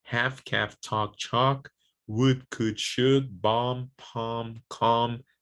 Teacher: now the l is not pronounced in these words these words it's silent right so there's no hell for kell